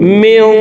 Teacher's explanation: এই নুন সাকিনকে নাকের ভিতরে লুকাইয়া গুন্নার সহিত পড়ব।